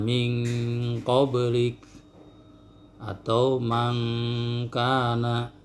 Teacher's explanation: ikhfa ab'ad yang dominan suara dengung dan samarnya itu ke hidung, hurufnya qaf dengan kaf.